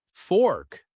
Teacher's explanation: The vowel is short and round.